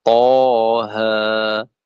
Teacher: maka cara bacanya dua harakat